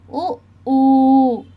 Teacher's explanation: ఉ ఊ లను ఓష్యాలు అంటారు